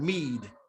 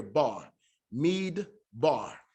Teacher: So you have mead that closes the syllable. That's letting you know there's a stop here. Mead bar. So this closes the syllable, and then the syllable picks back up here.